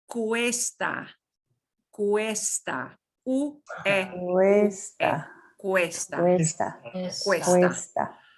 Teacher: So it's a diphthong. The two vowels are going to be both pronounced. They're going to kind of slide together, but it's going to wind up sounding kind of like a W in English.